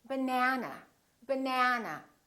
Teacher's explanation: this second syllable is stressed that means this vowel is going to be much longer repeat banana banana so the e is going to be prolonged